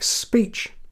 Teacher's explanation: after the S there you may think it's a p but chop off that s and what you're left with sounds not like Peach but Beach